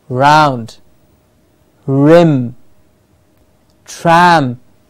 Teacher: there's no flapping of the tongue that there is no vibration of the tongue the tongue is curling up in the mouth a little bit behind the top teeth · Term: r sound